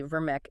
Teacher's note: Standard Turkish has a subtle sound called the closed E. It's slightly different from the regular E.